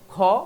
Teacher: খ বেশি বাতাস লাগে এজন্য মহাপ্রাণ